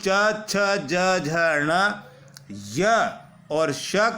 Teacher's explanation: तालू से उच्चारित हो रहे हैं इसलिए इनको तालव्य कहते हैं इन वर्णों के उच्चारण में जीहा मुख के ऊपरी चिकने भाग तालू को स्पर्श करती है